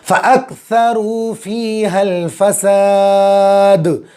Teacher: कलकला होगा, आवाज़ टक्कर खा के अलग हो जाएगी